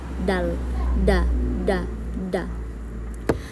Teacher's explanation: Selanjutnya ada huruf dal yang termasuk di dalam makhorijul huruf al-lisan, ujung lidah ke pangkal gigi seri atas